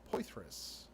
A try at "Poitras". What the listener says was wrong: The H is actually silent. It's Poitras.